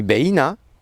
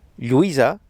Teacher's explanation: On va également utiliser le tréma en catalan pour bien préciser quand deux voyelles côte à côte se prononcent distinctement et ne forment pas une diphtongue